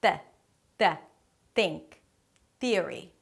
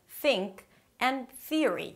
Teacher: The th turns into a t or a d. So 'think' turns to 'tink' and 'they' turns to day. In most Spanish dialects, there is no th sound.